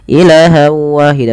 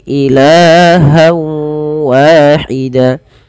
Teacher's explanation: Pada lafal ilah di sini kita panjangkan la-nya sepanjang 2 harokat karena ia ada mad tabi'i. Fathah bertemu dengan alif, jangan dipendekkan ya teman-teman.